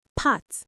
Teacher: You should feel mostly just air, right? No real buzzing. That's voiceless.